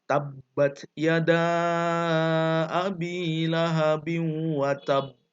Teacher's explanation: Qalqalah akbar ini berhenti di akhir kalimat, kemudian memantul, tapi mantulnya ada jedanya. Ya, jeda sejenak ya.